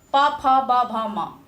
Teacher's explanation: इसमें जीवा के साथ-साथ ऊठ पूर्त सक्रिय होता है प फ दोनों ऊठ बिना टच के इस वर्ण को उच्चारण आप कर ही नहीं सकते हैं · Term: ओस्ट